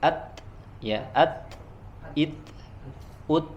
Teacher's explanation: huruf ta dia mengalir angin tapi suaranya tidak mengalir ya. Hamsnya otomatis harus langsung berhenti ya.